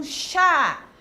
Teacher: tem o som aberto e ela recebe o acento agudo